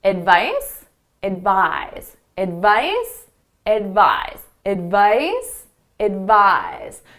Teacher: So the second syllable is the one you hear louder and longer. · So both of these are stressed on the second syllable.